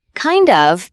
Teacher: Kind of becomes kinda. The D and the of blend together.